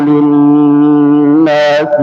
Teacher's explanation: Linnasi, ya, nun bertasydid, ya, dengungannya 2 harakat